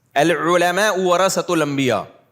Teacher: پھر علماء عین نا پورا حلق سے نکلتا ہے